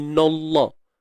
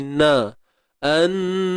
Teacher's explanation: lam pada kalimah Allah ni memang tebal bunyinya. Tapi jangan bawa pengaruh tebal itu pada huruf nun. Yang tebal hanya pada lam je.